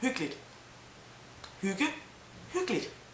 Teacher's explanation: actually, when you pronounce hyggeligt, the way it is spelled and as you should pronounce it, it is called hyggeligt. But in normal day-to-day speak, we just say hyggeligt. We simply skip an E, really.